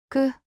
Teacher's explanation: 목에 힘이 들어가는 거예요. 경음이라고 해요. · 기억을 두 개 붙이면 소리가 더 긴장됩니다. 끄. 목에 힘이 들어가는 거예요.